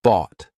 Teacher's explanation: instead of releasing it, instead of aspirating it, instead of pushing air through, you're going to just stop. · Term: held T